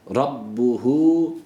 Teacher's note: rabbuhu işte burada zamiri uzatıyoruz öncesinde ra kalın a sesi rabbuhu B şeddeli ama ne dedik bila gunne